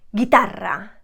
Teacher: it also has a rolled r at the end